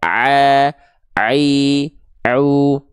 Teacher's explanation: Huruf ain dilafalkan dari yang namanya wastul halqi. Ya, wastul halqi itu artinya adalah tenggorokan bagian tengah kita atau tengah tenggorokan.